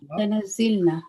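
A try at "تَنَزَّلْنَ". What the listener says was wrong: No, fatah. Lam shura fatah.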